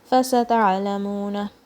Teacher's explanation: حاصبا, ba, okay, 2 counts. فستعلمون, careful with the ayn, it comes from the center of your throat and it's a digging sound. Dig it out of your throat.